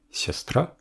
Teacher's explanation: l'accent est sur le a final le yo d'origine qui se trouve dans la syllabe précédente est donc transformé en ya